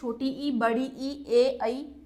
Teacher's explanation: अग्रस्वर होते हैं जिन स्वरों के उच्चारण में जिह्वा का अग्र भाग काम करे, उसमें आपके पास आएंगे ये छोटी ई, बड़ी ई, ए, ऐ।